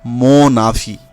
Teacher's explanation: এখানে এন আয়ের সাথে যুক্ত উচ্চারিত হচ্ছে মোনাভি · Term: সন্ধি